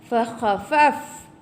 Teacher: Ada hamas ya pada fa, angin.